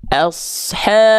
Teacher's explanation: Ada bentuk seperti alif lam tapi tandanya bukan tasydid di atas lamnya, maka ini alif lam qomariyah, bukan alif lam qomarudin. Ya, cara bacanya langsung masuk ke diizharkan, dijelaskan bunyi lamnya, nggak disamarkan.